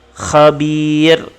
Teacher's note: Khabir, bir ini ma'arid sukun, ra ini dibaca tipis. Tarqiq.